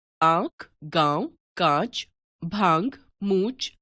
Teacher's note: जिन स्वरों का उच्चारण मुख और नासिका दोनों से किया जाता है वे अनुनासिक कहलाते हैं